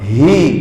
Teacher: huruf ha halqi paling bawah